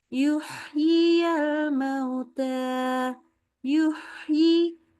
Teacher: Jangan selesai baca haknya yang sukun sampai ketemu yi. Jadi yuhyiyal. Hembusnya jalan terus. Oke? Yuk coba lagi.